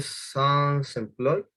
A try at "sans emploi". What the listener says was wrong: Ah, ici. Parfait.